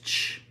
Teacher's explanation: So the air comes up through our lungs. It's unvoiced. So we don't we don't voice it at all. We don't turn on our vocal cords and it goes out. So it's like breathing heavy.